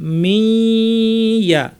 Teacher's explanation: মি বলার সময় নাকটা খুলে দিবে, নাক দিয়ে গুন্না করবে। ইয়া বলার সময় সেটা শেষ।